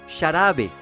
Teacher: La X inicial representa la fricativa palato-alveolar sorda, sonido como el de la SH del inglés. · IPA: /ʃ/